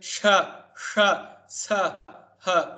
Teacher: Now we were speaking of the little experiment here, putting the paper on your mouth. When you say sha, sha, sa, obviously you would blow air, and so the paper would bulge outward, convex. So that's called the Ushmana, meaning breathing out.